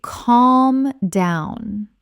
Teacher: In the word calm, the L is often silent or very soft in many English dialects. It sounds more like calm.